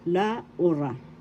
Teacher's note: The accent is in the second syllable, La Ura.